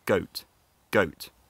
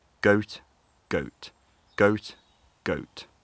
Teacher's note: There's a glottal stop between O and T, which is sometimes a bit hard to hear, so I'll do it a few times.